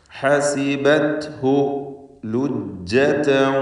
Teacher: ഹസിബത്ഹു, ഈ പദങ്ങളിലൊക്കെ അന്ത്യത്തിൽ വന്ന ഹായികൾ തൊട്ട് മുമ്പിൽ സാക്കിനത്തായ അക്ഷരമായതുകൊണ്ട്, സുക്കൂനുള്ളത് കൊണ്ട് ഹായിന് അല്പം പോലും ദീർഘം വരികയില്ല